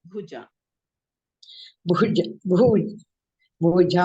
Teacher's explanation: ಭಾ ಮಹಾಪ್ರಾಣ ಭಗಿನಿ ಜ ಅಲ್ಪಪ್ರಾಣ